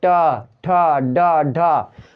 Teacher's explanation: इसी प्रकार से टा ठा डाढ़ा ये मूर्धा है, टा देखते हैं आपकी जीभ मुड़ती है, टा ठा मूर्धा मतलब ऊपर के उसमें जाकर के टच करता है फिर नीचे आता है